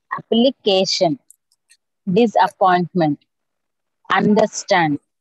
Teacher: Accent on the third syllable